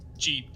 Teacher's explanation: there's not much voicing, actually, during the closure phase of the j in jeep. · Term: voiced affricates